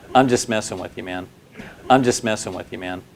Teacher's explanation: The words I and messing receive more stress than the other words.